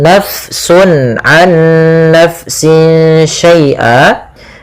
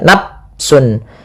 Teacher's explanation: fa-nya dialirkan karena fa memiliki salah satu sifat yaitu sifat hamas, yang dimana dia jaroyanun nafas, harus mengalir nafas kita di dalam melafalkannya. Ya, kesalahan yang sering terjadi juga di dalam membacanya, dia tidak mengalirkan nafas, misalnya nafsun, ini diganti dengan p padahal dia bukan.